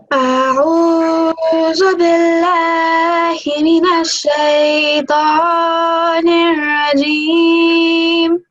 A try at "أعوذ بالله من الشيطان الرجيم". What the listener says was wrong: The dal. When you pronounce dal, please can you make sure that you're putting your tongue in between the top and bottom teeth, so it sounds like this, dal. Okay, the way you're saying za, so you're putting the tongue behind your teeth. I don't want you to do that when you're saying dal.